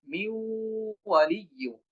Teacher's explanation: আমরা যদি ওয়াও এর দিকে খেয়াল করি, মিউ ওয়ালিয়ু, নুন উচ্চারণ করব না, সরাসরি ওয়াওকে আমাদেরকে উচ্চারণ করতে হবে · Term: ইদগাম